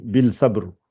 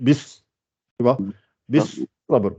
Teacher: il n'y a pas de L, il n'y a pas de sod.